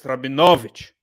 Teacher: got the emphasis on the second last syllable